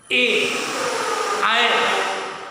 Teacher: ए आए का उच्चारण स्थान एक कंठ तालु संयुक्त है, माने जुड़ा हुआ इसमें है।